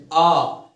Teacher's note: कंठ से आवाज आ रही है